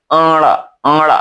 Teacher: मूर्धा के साथ-साथ नाक का सहारा लिया तो हो गया ण